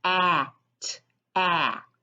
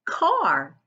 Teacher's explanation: Let's talk about when I put A and R together. It becomes what we call an R-controlled vowel because that R changes the way the A is sounding. So together, it makes the R sound.